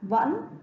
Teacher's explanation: Các con thấy trong tiếng này có vần ân âm cuối n, cho nên khi các con phát âm các con lưu ý cho cô vần ân và dấu thanh ngã ở tiếng vẫn